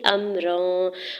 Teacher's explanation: حمزہ کے زبر کو میم ساکن کے ساتھ ملاتے ہوئے پڑھیں گے